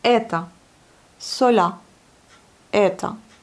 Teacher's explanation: on a le O à la fin, non accentué, on le prononce bien comme le A, tandis que c'est un O.